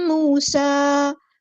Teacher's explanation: واو ساکن ہے، اس سے پہلے پیش ہے تو ایک الف کے برابر لمبا کریں گے، ایک الف ہوتا ہے 2 حرکات یعنی 2 کاؤنٹس کے برابر۔ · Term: واو مد